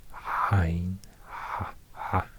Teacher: the voiced pharyngeal fricative used for example in modern Arabic, but not used in many languages today.